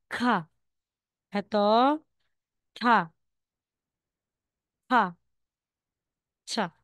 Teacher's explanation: ito sila is May hangin May aspiration po